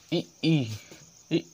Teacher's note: ई का उच्चारण स्थान कहाँ से होगा, तो तालु से होगा।